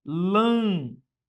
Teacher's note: A sílaba tônica recai sobre a antepenúltima. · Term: proparoxítonas, proparoxítona